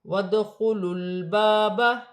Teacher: دال ساکن ہے، حروف قلقلہ میں سے ہے، قلقلہ کے ساتھ ادا کیا جائے گا۔ لام ساکن ہے، لام کو لام کی حرکت کے ساتھ ملا کر پڑھا جائے گا۔